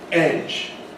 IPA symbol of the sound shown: eʤ